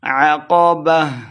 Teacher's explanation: آخر پہ ہا گول ہا ہے تو ہا کی آواز آئے گی